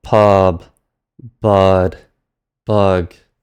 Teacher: You replace the final stop with its unaspirated equivalent. So to make that crystal clear, P turns into B, T turns into D, and K turns into G. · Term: low flat tone